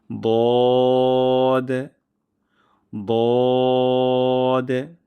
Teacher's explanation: জিহ্বার গোড়ার কিনারা উপরের মাড়ির দাঁতের গোড়ার সঙ্গে লাগিয়ে আমরা মোটা হরফে উচ্চারণ করব